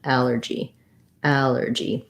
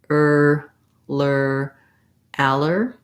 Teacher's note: it's an unstressed and short er but i still have to make the tight back american r